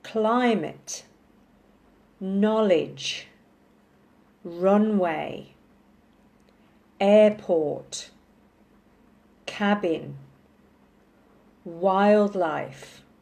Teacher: so in these nouns the emphasis is on the first syllable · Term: stress